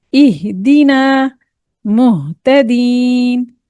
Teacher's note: हा, ही, हु, तहतदू, इहदीना। ए नहीं कहना, ई ए का साउंड अगर देंगे तो हम इसको गलत पढ़ रहे हैं।